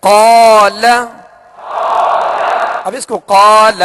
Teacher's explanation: لام کو نہیں کھینچیں گے، ٹھیک ہے، لام پر زبر ہے تو اسے بغیر کھینچے ادا کریں گے، اور قاف کو ہم نے دراز اس لیے کیا کہ قاف کے ساتھ الف مدہ ہے۔